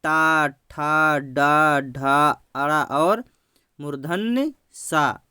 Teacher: इसको बोलने से हमारा जीवा मुड़ता है, इसलिए इसको बोलते हैं मूर्धन्य व्यंजन।